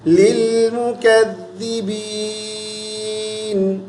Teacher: ذال کو پڑھتے ہوئے زبان کی نوک دونوں دانتوں کے درمیان میں رکھیں